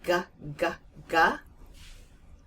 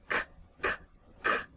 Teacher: So in the back of your mouth, that k, k, k, and the g, g, g come from the very back of your mouth. And all of the sounds come anywhere from in that range.